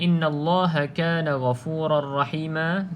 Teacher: Okey, tuan-tuan dan puan, mana-mana yang tuan-tuan dan puan lihat nun yang bersabdu ataupun mim yang bersabdu, maka kedua-dua huruf yang bersabdu tersebut perlu didengungkan 2 harakat